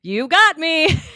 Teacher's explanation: it ends it sounds like you're asking a question